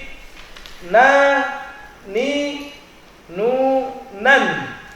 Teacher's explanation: Huruf na keluar dari ujung lidah dengan gusi atas sedikit ke belakang atau sedikit ke dalam daripada huruf lam. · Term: huruf nun